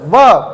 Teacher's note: व दांत से होठ टकरा गया, दंतोष्ठ है।